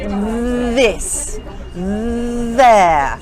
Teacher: This is a slightly buzzing sound, like a bee